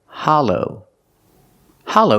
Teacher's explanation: Hollow the short ah sound like stop and hot ha Hollow the second syllable is the long o like go and no